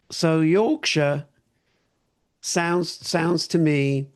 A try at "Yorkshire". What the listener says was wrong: You've just gone very Cockney, sir. So push your tongue forward behind your back teeth and go oh.